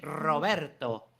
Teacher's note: It's spanish we roll the ARs